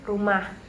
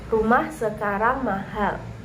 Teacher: setiap kalimat berita diakhiri dengan pola intonasi 231